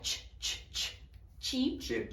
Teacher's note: Já se for CH, esse som tem um ataque. Não tem como a gente fazer um som contínuo com ch. Se a gente fosse fazer um som contínuo, teria vários sonzinhos, tipo tch, tch, tch, tch, tch, tch, né?